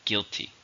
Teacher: How many syllables are in guilty? 2. Stress on the first.